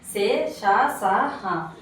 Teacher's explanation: గాలిని బయటకు ఊదుతూ పలికే అక్షరాలు సే, ష, స, హ. వీటిని ఓష్మాలు అంటారు.